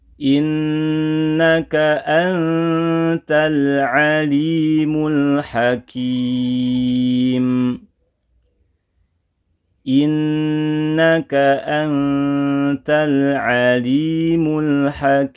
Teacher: Terakhir latihan pengucapan Anta ya sama dengan sebelumnya hukumnya ikhfa namun praktiknya harus menyertakan bacaan ghunah lamanya dua harakat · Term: gunnah